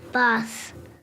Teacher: this child uses the long a vowel in bath